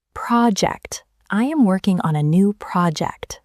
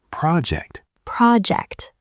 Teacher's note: The first part, pro, is loud and clear.